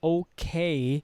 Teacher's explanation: we unstress the first syllable, which is O.